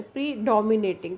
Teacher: तो डी के ऊपर स्ट्रेस आ जाता है. प्री को हम थोड़ा सा दबा के बोलते हैं, दैट इज़ स्ट्रेस मार्क.